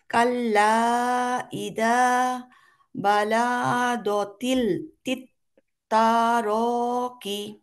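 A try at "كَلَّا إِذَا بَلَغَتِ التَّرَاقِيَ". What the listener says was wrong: এটা কি বালা গ, এটা গয়েন। এটা গ, এটা গ, গয়েন গয়েন। গ গ গ ফর গরু।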